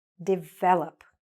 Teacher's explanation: So, where's the stress? Here, the second syllable.